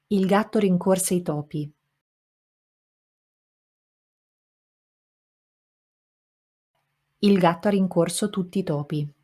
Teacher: As you heard in Italian, it took me longer to say the second utterance because every single syllable has the same weight, has the same length, and I have to say them all and cannot reduce any of them because it's syllable timed, not stress timed.